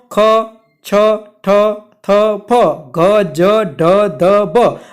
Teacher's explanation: उच्चार करशो त्यारे वधारे हवानी जरूर पड़े छे, एटला माटे एने महाप्राण व्यंजन कहे छे। टूंकमां जे व्यंजनोनुं तमे उच्चारण करो अने हवानी वधारे जरूर पड़े तो एने महाप्राण व्यंजन तरीके आपणे ओळखीए छीए।